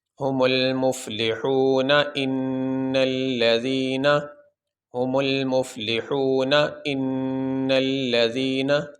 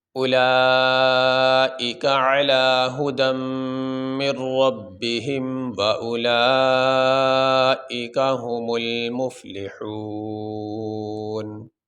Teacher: اب یہاں بھی ہم وقف کریں گے، سانس لیں گے، تو وقف کرنے کی صورت میں یہ جو نون کے اوپر زبر ہے یہ نہیں پڑھا جائے گا، نون کو ساکن پڑھیں گے